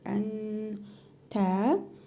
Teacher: İhva qaydasına görə cəzimli nun hərfini 1 əlif miqdarı uzadaraq burnumuzda tələffüz edirik